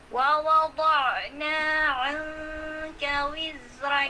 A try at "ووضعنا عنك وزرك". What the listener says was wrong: kumakapal yung waw mo. Hindi siya wawa, kundi wa, wawa. Hindi siya wawa.